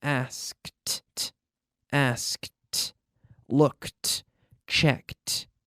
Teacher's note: so in the past like all verbs ending in a K we have the T sound